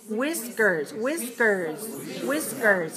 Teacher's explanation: whiskers two syllables is stressed on the first and not the second one